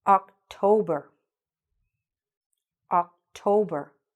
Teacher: The stress again in the middle.